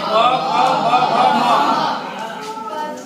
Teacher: ठीक है, ऊ से छोटा ऊ बड़ा ऊ, पू से प वर्ग में कौन कौन से आते हैं, पांच आएंगे, प फ ब भ म, और उ पद्मानीय यानी कि अह फ, इनका स्थान क्या होता है, ओष्ठो। प फ बोलेंगे तो ओठ क्या करेगा, आपस में टच होगा।